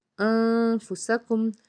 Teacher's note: انفسکم، ساکن کے بعد فا ہے تو یہ اخفا کا قاعدہ ہے، یعنی کہ فا جو ہے وہ اخفا کے 15 جو حرف ہیں ان میں سے ایک ہے، تو جب اس کو ادا کریں گے تو آواز کو ناک میں چھپائیں گے اور غنہ کریں گے